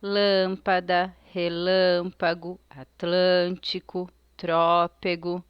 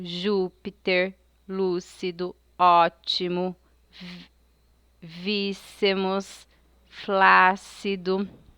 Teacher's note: Tem a antepenúltima sílaba tônica, nesse caso é a sílaba que leva o acento. A vogal com timbre aberto é acentuado com um acento agudo.